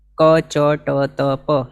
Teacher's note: સહેજે બોલાય છે કોઈ વધારે જોર આપવાની જરૂર નથી કંઈ નથી સહેજે બોલાય છે એવા છે અને મોઢામાંથી હવા કાઢવાની કે એવું પણ કંઈ જરૂર નથી